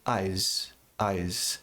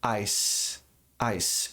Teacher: E não precisa ser um som muito forte, dizer eyes, um leve Z, eyes, eyes, que fica completamente diferente do som de S, que é um som que tem muita pressão